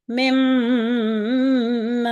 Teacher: جب میم کا بھی غنہ ہوتا ہے تو کیونکہ میم کا جو مخرج ہے وہ ہمارے ہونٹ ہیں، ہونٹوں سے مخرج اخراج ہوتا ہے، میم کی آواز جب ہوتی ہے خارج تو اس صورت میں جب ہم میم کا غنہ کریں گے تو ہمارے دونوں ہونٹ آپس میں مل جاتے ہیں اور ناک سے آواز جاری ہوتی ہے